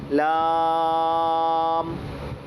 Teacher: پھر یہ لام ہے، اس کا مخرج ہے زبان کی نوک اوپر کے دانتوں کی جڑوں کے پیچھے سے، جہاں سے تا دال تواں نکلتے ہیں، زبان کی نوک اوپر کے دانتوں کی جڑوں کے پیچھے لگ کے نکلے گی اور پتلی آواز میں نکلنا ہے